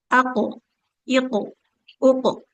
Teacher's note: aq iq uq dia ikut tebal dengan hurufnya ya.